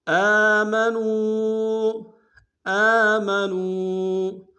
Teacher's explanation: نون کو واو کے سامنے لائیں گے، واو مدہ ایک انداز میں کھینچیں گے